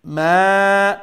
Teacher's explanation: So then mim alif zubar ma, alif is a madda alif. So the ma is going to be stretched one alif long. So two things again here, ghunna and stretching one alif.